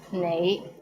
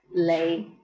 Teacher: An example is the word you. The right way to pronounce it is nei, but in Hong Kong, many people pronounce it as lei. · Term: lazy tongue